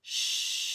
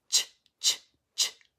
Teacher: If we do the sh sound, I can hold it forever until I run out of air. Shh, because the air is just flowing.